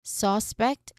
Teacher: So we stress on the first syllable, suspect, like saying, I saw the suspect at my house yesterday. So suspect here, it's considered as a noun, no? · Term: first syllable is stressed